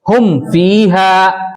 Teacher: میم کو ظاہر کرنا ہے اور بغیر غنہ کے جلدی پڑھنا ہے, پڑھیں گے. جیسے ہم فیہا, اب یہاں پر ہم فیہا, یہاں پر ہم جلدی کر کے پڑھ رہے ہیں, میم کو ہم ظاہر کر رہے ہیں, کھینچ نہیں رہے ہیں, نہ غنہ کر رہے ہیں اس پر اور نہ اخفا کر رہے ہیں. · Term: اظہار شفوی